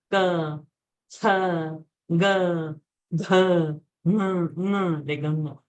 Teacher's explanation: Everything is coming from throat, kantha.